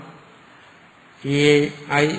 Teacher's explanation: കണ്ഠവും താലും കൂടെ ചേർന്നിട്ടാണ് ഏ ഐ എന്ന് ഉച്ചരിക്കുമ്പോൾ.